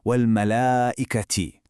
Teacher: where we stretch that ah sound. That elongation is a rule called mad.